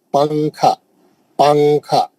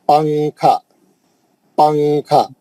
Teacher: ہم نون کو نہیں پڑھتے, نون کو چھپا کے پڑھتے اس کو. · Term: اخفا